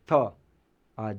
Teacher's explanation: થ બોલતી વખતે એ દાંતને જીભ જે છે દાંતને અડે છે દંત્ય વ્યંજન છે